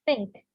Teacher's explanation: Ini TH-nya yang tipis karena ada TH yang tebal, ya. TH-nya tipis nih.